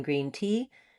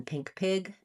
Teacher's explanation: So main error to watch out for is between the e as in green tea and the i as in pink pig tense and lax but both high front vowels. Where you're going to see the error on the e is when it's short in duration because of the stress of the sentence or because of the stress of the word.